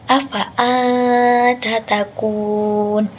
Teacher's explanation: Keterangannya adalah nun bersukun itu bertemu dengan salah satu huruf ikhfa, yaitu huruf ta. Dibacanya samar, jadi tidak dengung dan tidak jelas.